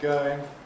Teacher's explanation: Well, there's just one further example, going, where the O can lose the U element, coming out something like going.